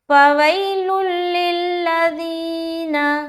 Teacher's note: تو یہاں پر ہم ادغام تام کر رہے ہیں، یعنی کہ بغیر غنہ کے ادغام کریں گے، ناک میں آواز روکنا نہیں ہے، ٹھیک ہے؟ بالکل جلد ادا کرتے ہوئے نکل جائیں گے۔